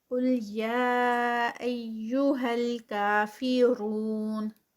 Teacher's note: قل قل، یہ کافرون میں جو ہے یہ لائٹ ہے اور یہ قاف ہیوی۔ یا یہاں پر یا جو ہے وہ مد ہے 4 کاؤنٹس